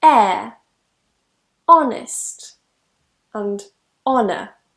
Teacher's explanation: the sound we use is actually a vowel at the beginning of those words